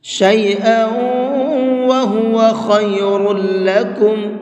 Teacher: خا کو بھی اور را کو بھی، دونوں لفظوں کو منہ بھر کے پڑھیں گے